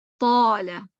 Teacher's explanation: طال اس میں بھی طا موٹا ہے, الف موٹا ہو جائے گا